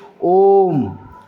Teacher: प्लुत स्वर जो है इसमें जो उच्चारण होता है इसमें और लंबा खींचते हैं यानी कि समय जो है और अधिक लगता है उदाहरण के